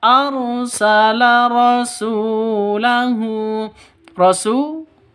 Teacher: panjang dua ketukan karena ada wawu mati diawali dengan dammaah atau wau mati sebelumnya berharakat dam dommah.